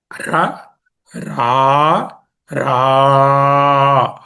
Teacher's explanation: హ్రస్వము, దీర్ఘము, ప్లుతము, అంటే మూడు మాత్రల కాలం పలకవలసిందని ప్లుతం అంటారు